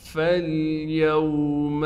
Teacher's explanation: ہم فا کو کھینچیں گے نہیں، فا کو ڈائریکٹ لام سے ملائیں گے